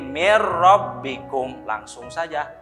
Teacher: Yang asalnya ditulisannya min rabbikum karena hukumnya idgham bila gunnah, jadi mir rabbikum langsung saja. Ya, nunnya gugur langsung ditasdid ke ro.